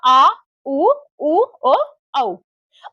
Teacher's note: पसच स्वर यानी कि पिछला भाग। हमारी जो जीभ का पिछला भाग है जो ऊपर उठता है। स्पंदन यानी कि उसमें नाद उत्पन्न होता है।